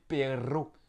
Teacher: quand il y a deux R, on prononce encore plus longtemps le R roulé